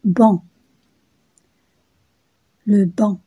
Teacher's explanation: Donc pour le son en, la bouche, il se prononce de la façon suivante, la bouche ouverte, les lèvres arrondies, la langue au milieu et l'air passe par la bouche et par le nez. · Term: voyelle nasale